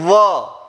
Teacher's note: यहां पर होता हुआ दिखाई दिया कि ये पॉइंट आपके पास ऊपर के दांत नीचे के होठ पर या नीचे का होठ ऊपर के दांतों को कहीं ना कहीं स्पर्श करता हुआ दिखाई दे रहा है